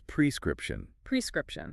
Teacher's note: so the emphasis is on the first syllable yes and there are only three syllables not four